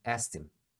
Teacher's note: ele acaba omitindo o k porque é ruim de falar